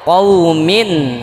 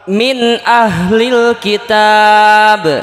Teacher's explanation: izhar itu jelas jelas bunyi tanwin atau Nun matinya ketika bertemu dengan huruf halaq yang enam